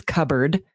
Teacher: which sounds like it would be spelled with BB. There's a silent P in the middle. Literally, it's cupboard, right.